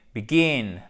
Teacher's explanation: un accent tonique sur la seconde syllabes